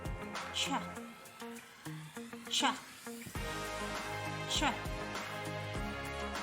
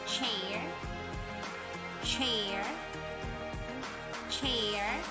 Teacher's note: voiceless affricate made with the tip of the tongue on the alveolar ridge. It sounds like ch, ch, ch.